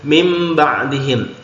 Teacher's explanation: nun sukun ketemu ba hukumnya iqlab ya jadi dibaca nunnya lebur menjadi mim ya karena ketemu ba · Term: iklab